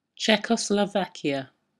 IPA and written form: ˌtʃɛkə(ʊ)sləˈvakɪə (Czechoslovakia)